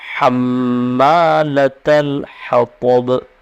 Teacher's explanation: حطب اور با پر قلقلہ ہوگا رکنے کی صورت میں. · حطب میں ہا کو اچھی طرح ادا کریں گے اور تو اس کو پر پڑھیں گے یعنی ہوٹ گول ہوں گے